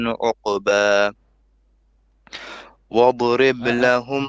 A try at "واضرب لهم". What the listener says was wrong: dot, don't bounce the dot.